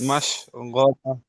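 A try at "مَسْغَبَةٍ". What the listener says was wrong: মাস, এটা সিন আছে, মাস নিচে আছে, মাস গবা।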